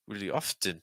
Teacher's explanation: I would take off the T on often. One of the things that I like about doing that is it's going to make the word flow more because often sounds choppy versus often is going to flow a lot more.